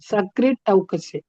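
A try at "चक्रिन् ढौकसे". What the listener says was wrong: It is not sa, it is cha bhagini. Chakrin. So n, half na. Halant na is there. Plus daukase. So tavarga plus what is the paravarna? No, purva varna is nakara. No, chakrid daukase. Chakrin is there. Nakara should be the adesha. Chakrin daukase. Anda solro illa. Like we pronounce anda like that. Chakrin daukase.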